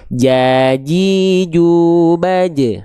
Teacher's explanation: Huruf jim dia dilafalkan dari tengah lidah juga, Teman-teman. Tapi tengah lidahnya sampai nempel. Kalau huruf ya, tengah lidahnya enggak sampai nem enggak sampai nempel.